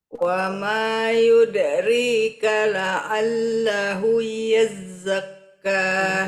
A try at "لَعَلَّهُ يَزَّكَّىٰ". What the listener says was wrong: Wah, nggak boleh lahui. Dia cuma lahu saja. Lahu yazzakka. Ulang.